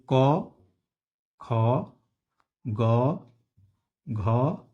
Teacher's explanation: क से लेकर अंग तक जो क, ख, ग, घ और यह जो अंग होता है यह कंठ से बोले जाने वाले हैं